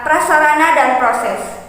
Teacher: terjadi persenyawaan dari dasar pengucapan kedua konsoid tersebut melalui perpindahan yang sangat cepat, yaitu dari bilabial tidak bersuara kepada apiko-alveolar getar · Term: gugus konsoid PR